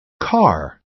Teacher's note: it's hard to hear the a sound by itself instead we hear the r sound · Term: Bossy R effect